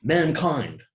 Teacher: Perhaps one is a little more stressed than the other, but perhaps the first one is a little more stressed, but still, mankind. I think both syllables take considerable stress, two stresses in a row. When you get that, we have a spondaic foot.